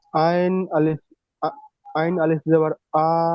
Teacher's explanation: আলিফ মাদ্দাকে এক আলিফ পরিমাণ টান দিয়ে পড়তে হয়।